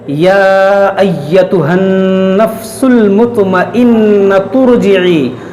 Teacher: और अगर इस आयत को हम मिलाकर पढ़ेंगे, या अय्यतुहन नफ्सुल मुतमइन्ना तुरजिई। अब अगर ता को रा से मिला देंगे तो ये हमज़ा जो है बीच में ये गिर जाएगा, इस हमज़ा को नहीं पढ़ा जाएगा।